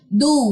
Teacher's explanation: वाव खाली मा कबल पेश, इसको कहते हैं वाव मद, 2 काउंट्स लंबा करें